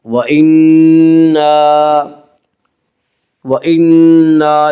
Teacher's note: علینا، وَإِنَّا، وَإِنَّا، نون مشدد غنہ ہوگا، غنہ کی مقدار ایک الف ہے۔ وَإِنَّا، وَإِنَّا إِن، وَإِنَّا إن میں مد منفصل ہوگا۔